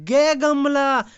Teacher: कंठ से भी बोला जाता है और अल्पप्राण भी है महाप्राण नहीं है